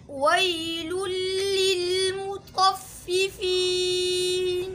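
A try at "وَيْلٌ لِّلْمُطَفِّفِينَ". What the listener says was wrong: आप अल्फाज को जो है जकड़ रहे हो, मजबूती से पढ़ रहे हो। ये लाम इस तरीके से इसको सही पढ़े। वैलुल लिलमुतफ़्फ़िफ़ीन।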